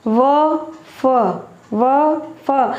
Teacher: व और फ बोलते समय जो हमारे ऊपर के दांत है वो नीचे वाले होठों से स्पर्श कर रहे हैं। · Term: दंत्योष्ठ्य